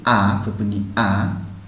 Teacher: Hamzah sama ha ini menempati posisi makhraj paling pangkal ya, atau bawah ya, di aqsa tenggorokan paling bawah